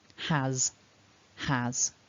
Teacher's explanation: just let your ah blend through into a nice voiced z